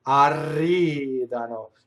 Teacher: Notice the penultimate stress in arridano.